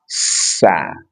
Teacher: sin ujung lidah diletakkan pada dinding bagian dalam gigi seri bawah